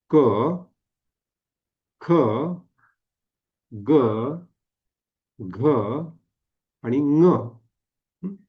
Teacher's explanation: लक्ष द्या म्हणून बघा क ख ग घ आणि म म्हणजे ही पाचही अक्षर उच्चारत असताना कंठामध्ये आपल्या जिभेचा मागचा भाग कंठाला टेकतो